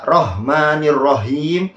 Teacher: Sedangkan ha yang ini baca Rahmanirrahim, itu ha letaknya berada di aqsal halq, di pangkal sini letaknya